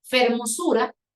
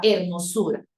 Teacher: La consonante F se aspiró hasta convertirse en una consonante H muda del español.